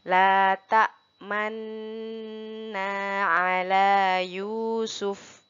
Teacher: pada kata manna seperti dibaca manunna, tetapi hanya menggunakan isyarat bibir untuk kata nu atau domahnya. Jadi dibacanya tetap dibaca manna. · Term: ishmam